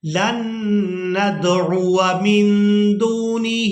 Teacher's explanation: ہم نے یہاں پر واو کو کھینچ کر ادا نہیں کرنا کیونکہ یہ الف مدہ نہیں ہے